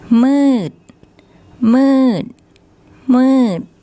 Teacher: the door deck, which as an initial consonant makes a D sound, but as a final consonant makes an unreleased T sound